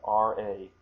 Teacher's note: it sounds almost as if I'm saying d, sayonara, but actually that is the r sound